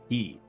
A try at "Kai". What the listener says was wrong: Kai, You said key.